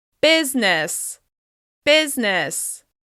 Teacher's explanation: It's just two syllables with stress on the first one